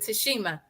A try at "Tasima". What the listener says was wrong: It's Tashima, no H. We always add the H in there.